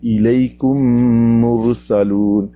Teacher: ہمارے پاس جو قرآن پاک ہوتے ہیں ان میں دوسرے میم پر شد لکھی ہوتی ہے، یعنی پہلے میم کو دوسرے میم میں ضم کر دیتے ہیں، شامل کر دیتے ہیں۔ اب پھر میم کو جو دوسرا میم ہے جس پر شد ہے اس کو غنہ کر کے پڑھتے ہیں